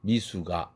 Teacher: 숙 할 때 윽 사운드가 링킹된 것입니다. 링킹됐죠.